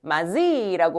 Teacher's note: 얘들아, 누구랑 누구랑 만났어? 디귿이랑 이 모음이 만났어. 맞지? 바뀐 거 누구야? 디귿이 뭐로 바뀌었어? 지읒으로 바뀌었어. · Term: 구개음화